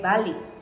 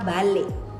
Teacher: Ada bunyi b, a, el, i, dan ek. Sementara pada sebagian orang yang lain dia mengucapkan dengan kata balik, yaitu bunyi b, a, el, i, dan ek glotal.